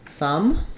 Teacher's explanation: the uh sound my tongue is flat and Central